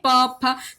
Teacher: ठीक है, फिर प फ ब भ म, ये जो होता है ये ओष्ठ होता है, क्योंकि हम जब इसे बोलते हैं प फ, तो इसमें हमारे जो ओंठ होते हैं ये दोनों ऊपर और नीचे ये स्पर्श करते हैं एक दूसरे